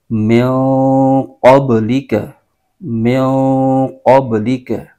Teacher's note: با میں با حروف قلقلہ میں سے ہے، با پر قلقلہ ہوگا اور اس کو قلقلہ کر کے پڑھیں گے